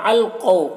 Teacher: مع القو، قاف حروف مستعلیہ میں سے ہے، اور واو لین ہے، اسے نرم آواز کے ساتھ جلد پڑھیں گے